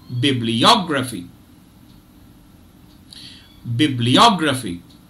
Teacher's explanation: it divides itself into five syllables bib Lee or graphy and there are two stress syllables the secondary stress is on Bib and the primary stress is on OG